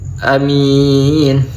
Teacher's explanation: Ada bacaan mad alif disukun, baca waqaf, panjangnya 2-6 harokat.